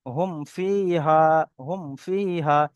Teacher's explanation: মিম সাকিনকে বিনা গণনায় জাহির করে পড়তে হবে। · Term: ইজহারে শাফাবি